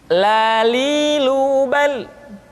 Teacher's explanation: huruf la diucapkan dengan mengangkat ujung lidah kita, dengan disentuhkan dengan langit-langit.